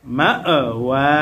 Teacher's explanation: সুম্মা মাআওয়াহুম, মাআওয়া, ওয়াও খারা জবর ওয়া, ওয়ায়ের উপরে খারা জবর আসার কারণে এক আলিফ টান হবে মাদ্দে তবাই।